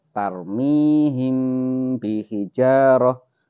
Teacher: Him sampai keluar dengungnya baru dibaca hurufnya. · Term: ikhfa syafawi